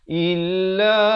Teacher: Hamzah beri bawah bunyi i, bukan bunyi e.